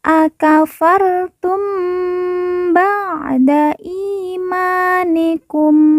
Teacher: Di sini ada mim sukun atau mim mati yang bertemu dengan huruf ba. Maka kita baca dengung.